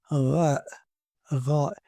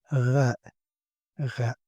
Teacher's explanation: It's an uvula sound. It goes from the back of your throat, and it's vibrate like as I said, it's like R in French, and I think it has no equivalent in English.